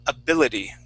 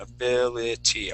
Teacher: t switching to a D sound